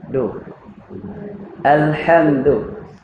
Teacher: Huruf dal sentuh hujung gigi hadapan. Pangkal gigi hadapan.